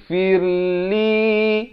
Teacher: Ra-nya jadi nipis di sini. Firli. 2 harakat.